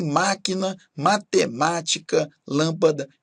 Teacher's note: possuem acento tônico na antepenúltima sílaba